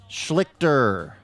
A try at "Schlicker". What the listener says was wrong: I think you put a T in there. Schlicker?